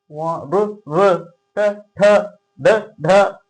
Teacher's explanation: Next మూర్ధన్యములు. మూర్ధన్యం అంటే నోటి పై భాగం నుంచి పలికేటివి